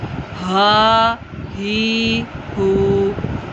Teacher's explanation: ये सीने वाला हा है, सीने की जानिब से अदा होगा।